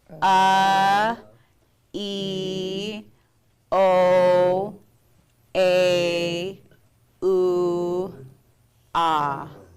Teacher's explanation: Notice how the glottal stop was at the front because naturally when you're making those sounds, you have a pause before you make that vowel sound.